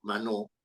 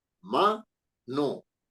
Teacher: Es una palabra aguda porque tiene la mayor fuerza de voz en la sílaba no.